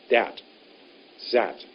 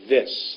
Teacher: Tip of your tongue under your top teeth, sticking out just a bit. If it goes behind, it'll make a D sound.